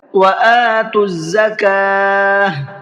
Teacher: وَآتُوا الزَّكَاةَ، میں نے دیکھی یہاں پر گول تا پر وقف کیا ہے، آیت کی ہے، کیونکہ یہاں پر علامت وقف ہے، اور جب گول تا پر وقف کرتے ہیں تو گول تا ہا بن جاتی ہے